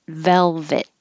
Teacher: you don't have to release the T, hold it